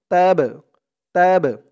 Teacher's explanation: এই বা টা হচ্ছে কলকলার হরফ ধাক্কা দিয়ে পড়তে হবে